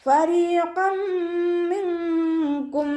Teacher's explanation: ഫരീഖം മിൻകും ഫ ലൈറ്റാക്കിയിട്ട് ഉച്ചരിക്കുക. മേലെ മുൻപല്ലിൻ്റെ അറ്റം താഴെ ചുണ്ടിൻ്റെ ഉൾവശത്ത് നനഞ്ഞ ഭാഗത്ത് വെച്ചിട്ട് ഉച്ചരിക്കുക